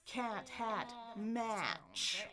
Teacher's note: I want my tongue in the front. I want my jaw wide open.